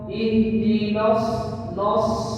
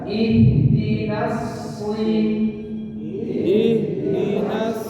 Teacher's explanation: Nun tipis, shot tebal. Ihdinas baru tebalkan shotnya.